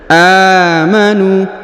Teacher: Ladzina amanu, huruf a dipanjangkan 2 harokat karena terdapat alif kecil di atasnya. Amanu, huruf nu dipanjangkan 2 harokat karena terdapat waw sukun di depannya, kemudian alifnya tidak dibaca atau tidak dianggap.